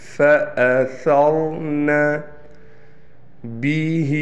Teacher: ہا کے نیچے کڑی زیر ہے، لہٰذا ہا کو ایک الف کے برابر کھینچ کر پڑھیں گے